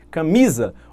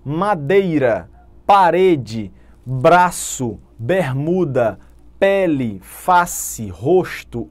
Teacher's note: Olha a tonicidade na penúltima sílaba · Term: paroxítona